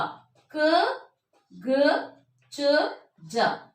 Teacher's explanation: ಕಡಿಮೆ ಉಸಿರಿನಿಂದ ಉಚ್ಚರಿಸಲ್ಪಡುವಂತಹ ಅಕ್ಷರಗಳನ್ನ ನಾವು ಅಲ್ಪಪ್ರಾಣ ಅಂತ ಹೇಳ್ತಿವಿ